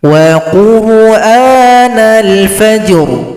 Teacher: Fajr ada bunyi ru pada huruf ra yang kita sukunkan.